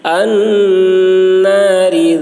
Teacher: نون مشدد غنہ ہوگا، را باریک ہوگی